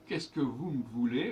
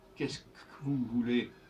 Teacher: Le E du Q ne se prononce pas. Vous me voulez, le E de M ne se prononce pas.